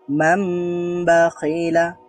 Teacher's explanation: ন সাউন্ডটা ম হয়েও এখানে একটু দেরি করতে হবে, একটু গুন্না হবে, এটাকে বলা হয় গুন্না।